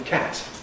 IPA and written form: kæt (cat)